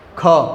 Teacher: તમે જ્યારે બોલો ક નથી પણ ખ, તો પાછળ છે ને હ આવતો હોય ને એવું લાગે તમને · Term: મહાપ્રાણ